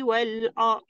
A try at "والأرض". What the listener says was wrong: والأرض. ضاد كنا بني. والأرض jangan muncung.